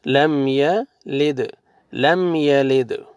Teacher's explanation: قلقلہ کریں گے، دال کو جزم ہے